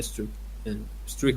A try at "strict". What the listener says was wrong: Omit a, you said strict. It doesn't have a at the very beginning. It's strict.